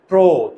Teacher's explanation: চোয়াল খোলে না, চোয়াল না খুললে ওকার হয়, তাই না? প্রো, প্রো, চোয়াল খোলে না, চোয়াল না খুললে ওকার।